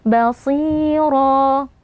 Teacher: as-shad walaupun kasrah dia tetap memiliki sifat tebal walaupun ketebalannya berkurang, jadi tetap kita angkat pangkal lidah, lalu kita panjangkan 2 harokat karena di depannya ada ya sukun ya.